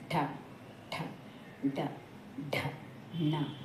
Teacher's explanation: పైన మూర్ధన్యం ఉంటే పైన అంగిలి, మన నాలుగు వెళ్ళి అంగిలికి తగులుతూ ఉంటుంది, లేకపోతే మనం వాటిని పలకలేము. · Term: మూర్ధన్యాలు